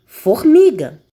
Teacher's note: paroxítonas, que é a penúltima sílaba da palavra mais forte, ou seja, tônica.